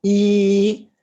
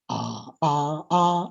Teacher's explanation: It is the first tone. The first tone is marked by a very flat movement. It's not rising, neither is it falling. And also it is at the highest pitch level.